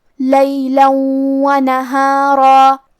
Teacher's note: کلمت لیلن کے آخر میں لام پہ تنوین زبر ہے، پھر حرف الواو آتا ہے، واو حروف الادغام بغنہ میں سے ہے، تو ہم یہ تنوین کو واو میں ملا کے غنہ اور تشدید کے ساتھ یہ حکم کو ادا کریں گے